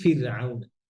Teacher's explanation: কাসরার পরে র সুকুন হলে র পাতলা উদাহরণ কি ফিরআউন জেরের পরে র সুকুন র পাতলা হ্যাঁ জি